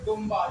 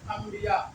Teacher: पढ़ेंगे क्यों क्योंकि नून के बाद देखिए बा आ रहा है जब भी नून साकिन हो और उसके बाद बा आए तो उस नून को हम मीम से बदल कर पढ़ते हैं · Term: नून मकलू